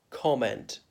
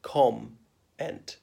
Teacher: the M has got to be part of the first syllable, com-ent. I know it's a double M, but it's not pronounced twice.